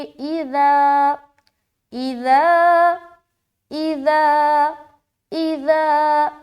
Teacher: الف خالی سے پہلے زبر ہو تو الف مدہ ہوتا ہے. الف مدہ کو ایک الف کے برابر کھینچ کر پڑھیں گے